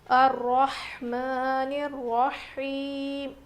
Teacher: ہا کی آواز بالکل ظاہر ہونی چاہیے، رو موٹا پڑھیں گے، کھڑا زبر ہے میم کے اوپر. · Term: بڑی ہا